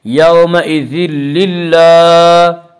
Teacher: اللہ کے لام سے پہلے زیر تو اللہ کے لام کو باریک پڑھیں گے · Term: لام باریک